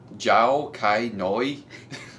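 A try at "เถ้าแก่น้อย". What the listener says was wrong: I'm thinking it's a T. Tai Kai Noi.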